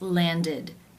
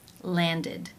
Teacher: the ending is pronounced with the e as in sit vowel and the d sound